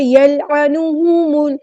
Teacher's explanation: ہونٹوں کو راؤنڈ کر کے صحیح سے ادا کرنا ہے پیش کو. یلعنو نہیں کرنا، ٹھیک ہے.